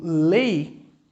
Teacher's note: Aquela que aparece de maneira mais discreta, mais fraquinha, é a semivogal